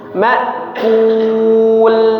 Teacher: Kalau dommah mulutnya monyong mak begitu lam sukun langsung balik lagi kul.